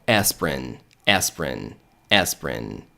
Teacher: Não vai ter um som de I, mas vai ter um som de E, tá? Um Ezinho curto, então E. Então, aspirin, aspirin, aspirin, tá?